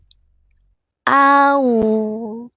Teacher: au jelas hamzahnya tenggorokan bawah a dibaca tipis au.